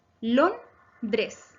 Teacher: Es grave porque su acento está en la penúltima sílaba lon.